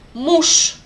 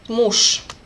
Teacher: Sh sound became unvoiced sh.